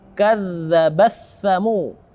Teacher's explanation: ta yang mati bertemu dengan tha, maka taknya tidak kita baca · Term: idgham mutajanisain